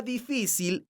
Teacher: la palabra difícil es una palabra grave porque su sílaba tónica es la sílaba fi esta palabra termina con la consonante l entonces tiene un acento